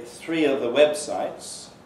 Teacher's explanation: The elision of V in of is especially to be heard before the.